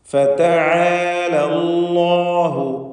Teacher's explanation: അല്ലാഹു എന്ന ഇസ്മുൽ ജലാലയിൽ ലാമിനെ തടിപ്പിക്കണം. തഫ്ഖീം ചെയ്ത് സ്വരഭാരത്തോടെ ലാമിനെ ഉച്ചരിക്കണം.